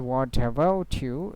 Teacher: when the T at the end of the word and next word started with a vowel sound, so the consonant sound and the vowel sound, it can be pronounced together like in one word. Okay, so it called consonant to vowel linking.